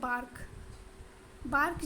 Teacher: बार्क जब आप बोलेंगे तो आप टच करके देखिएगा, आपके वोकल कॉर्ड में वाइब्रेशन होगा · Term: वॉइस्ड स्टॉप्स